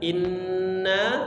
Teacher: Inna dengungkan, na dipanjangkan 5 harakat